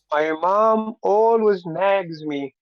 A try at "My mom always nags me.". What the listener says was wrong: You don't put so much emphasis.